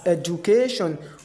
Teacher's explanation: But there are some there are some ways there are some instances in which letter D will be leaving J sound. D will be written but J sound will be pronounced.